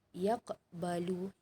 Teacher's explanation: qalqalah sughra ni adalah wasal, dia baca terus, jadi tak berapa nak dengar sangat lantunan dia